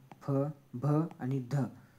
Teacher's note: म्हणतात तर काय म्हणतात तर यांना महाप्राण म्हणतो आपण बघा ह्या या वर्णाचा उच्चार करताना फुफुसातील हवा तोंडावाटे जोराने बाहेर फेकली जाते म्हणून त्याला काय महाप्राण म्हणतात बघा कशा तर महाप्राण ह या